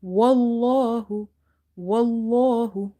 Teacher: I'm making this lam heavy because there is a fatha before it